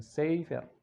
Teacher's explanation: Jadi jangan sampai salah ucap, bukan sefer tapi sefer. Jadi aksen atau intonasi jatuh pada suku kata pertama.